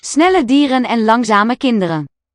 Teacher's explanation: This N of dieren is now carried over to the next syllable. It's still pronounced.